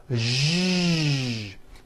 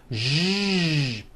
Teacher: To produce this sound, first make a sh sound, and then you add voicing. Sh, zh, like that. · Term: voiced SH sound